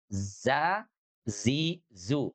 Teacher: huruf zai itu landing ke bawah berada di belakang gigi seri. Gigi seri bawah artinya digusi gigi seri bawah ya.